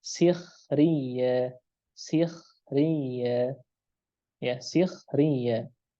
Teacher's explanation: ketika ghain dan kha dalam keadaan sukun sebelumnya kasrah asliyah, maka ya dibaca dengan tipis juga